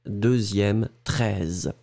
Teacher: un son qui est vraiment zzz, un petit peu comme un insecte